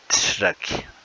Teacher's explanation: Se aplica al sonido que se articula con la punta de la lengua elevada y vuelta hacia el paladar, suavecito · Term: Retrofleja